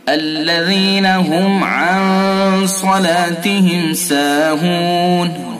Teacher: میم ساکن کے بعد عین تو اس میں اظہار شفوی ہوگا